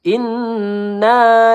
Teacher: nun bertasdid di sini gunah musyaddadah kita tahan dua atau tiga harakat